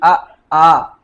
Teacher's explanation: ऐसे स्वर जिनका उच्चारण हम कंठ से करते हैं। जैसे छोटा आ बड़ा आ बोलते हैं।